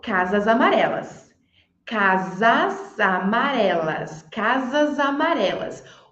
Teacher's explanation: voz alta provavelmente você falou casas amarelas casas amarelas casas amarelas o som não saiu com s saiu com z cas casas aí juntando com o a depois ali ficou casas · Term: Linking sound